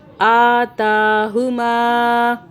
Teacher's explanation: اب یہ جو الف کے اوپر کھڑا زبر ہے اور تا کے اوپر بھی کھڑا زبر ہے، تو اس کو ہم ایک ایک الف کے برابر کھینچیں گے